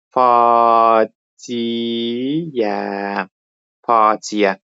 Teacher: Bu sözün A variantındakı sözün tələffüzünə baxanda i ilə ənin arasına y samiti əlavə olunub